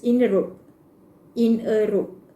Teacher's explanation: We included R sounds in between the words. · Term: linking R